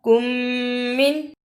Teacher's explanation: ادغام شفوی، میم ساکن کے بعد میم ہے